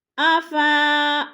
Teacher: افا پہ مد متصل ہے، 4 الفی مد ہے، اس کو بھی 4 الف کے برابر کھینچ کر پڑھنا ہے